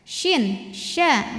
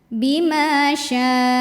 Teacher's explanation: Shin, sya nyebar angin ya.